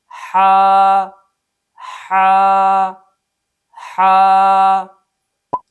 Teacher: اس حرف کا مخرج وسط حلق ہے، یعنی جب حا کو ادا کریں گے تو گلے کے درمیان سے ادا کریں گے۔ · اس حرف کو صفت رخوت کی وجہ سے نرمی سے ادا کریں گے۔ حا حا حا۔ نمبر 2، صفت ہمس کی وجہ سے اس حرف کو ادا کرتے ہوئے سانس جاری ہوگا۔